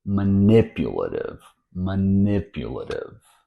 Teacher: the T here since it's between vowel sounds won't be a regular T it's actually a flap t or fasty as in butter water pattern it's not going to